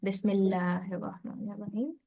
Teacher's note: initially you rounded lam, whereas it's meant to be thin lam.